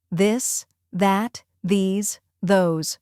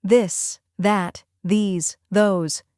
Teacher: Many learners replace these sounds with d, t, s, or z. But American English uses soft, smooth th sounds that require the tongue to come slightly between the teeth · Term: voiced th